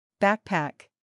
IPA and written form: ˈbæk.pæk (Backpack)